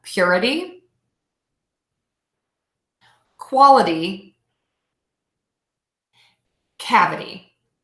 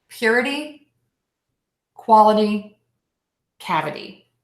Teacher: we are going to stress the syllable before the ITY, and we are going to say adee.